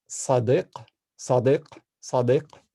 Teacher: the word for friend in Arabic has a pharyngalized S, a pharyngalized D, and then Q.